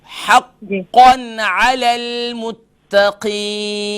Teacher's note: ता क्लियर होनी चाहिए, क़ाफ को भी मोटा करें